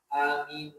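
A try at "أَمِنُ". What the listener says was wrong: Jangan terlalu panjang ya. Aminu, maksudnya dipercepat.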